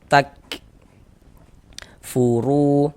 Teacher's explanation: Huruf kaf ini bukan bukan memantul, hanya mengalir saja nafasnya gitu.